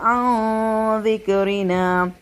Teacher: نون ساکن زال ہے یہاں پہ ہوگا اظہار